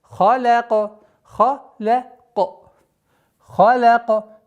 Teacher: Ха твердый звук, лям мягкий звук, каф твердый.